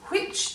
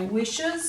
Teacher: Whereas when you say this witch, if you try saying it, putting your hand over your mouth, you'll feel which, there is air after the W, so you know how to put the H in